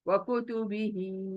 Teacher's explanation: वह जल्दी, कु जल्दी, तू जल्दी, बी जल्दी, ही खींचना है।